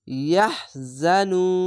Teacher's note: ইয়াহজানুন, এখানে 3 আলিফ টেনে পড়বেন, মাদ্দে আরজি